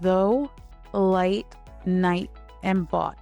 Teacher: In modern English, gh makes no sound at all. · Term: silent gh